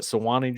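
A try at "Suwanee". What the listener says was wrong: And the U is silent. It's Swanee.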